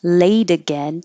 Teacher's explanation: this T changes to a D